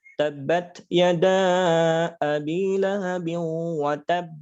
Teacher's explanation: Qalqalah Akbar ini qolqolah kubro yang bertasydid cara bacanya tahan dan pantulkan tahan dulu baru pantulkan